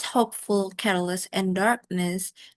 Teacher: the stress remains on the first syllable which is the root word hope, care and dark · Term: stress perceiving suffixes